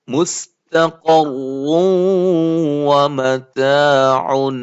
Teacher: ادغام ہے نون تنوین کا, نون تنوین کے بعد واو آ رہی ہے